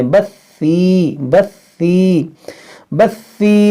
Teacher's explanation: تو سین نہیں ہے، یہ ثا ہے، نرمی سے پڑھیں